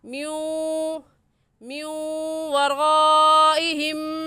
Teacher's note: اس لیے یہاں پر غنہ ادغام کے ساتھ ہوگا